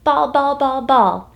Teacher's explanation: that's a plosive sound it's an explosive burst of air